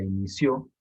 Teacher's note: Tiene el acento en la última sílaba, en ció. Además, es una palabra aguda que termina en vocal.